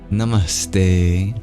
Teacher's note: our tongue moves towards our teeth to produce the T sound in te, it picks up the dental S sound in the same spot.